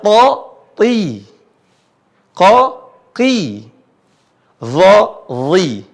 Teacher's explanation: kalau dia berharokat kasrah, dia mirip seperti I, disertai dengan bunyi tebal. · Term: I yang tebal